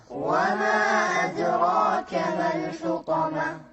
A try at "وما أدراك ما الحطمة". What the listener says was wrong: نفس الشيء الدال هني قلقلة.